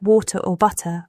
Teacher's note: T flapping. In American English, the T in words like water or butter often sounds like a soft D.